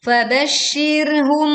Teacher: ro sukun kita tekan dengan suara yang tipis karena didahului kasroh